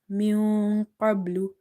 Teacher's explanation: Qaf is heavy because it's from the heavy letters or musta'aliya letters. Ba is sakin from the qalqala letters.